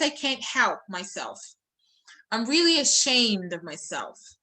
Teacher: So yourself and myself and all these words, they're unstressed.